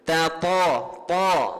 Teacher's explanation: Tebal di pangkal lidah menyentuh langit lembut dalam itu. Ta. Jangan tatai. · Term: ta tebal